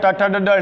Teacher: ट वर्ग का संपूर्ण वर्ग का उच्चारण स्थान मूर्धा होता है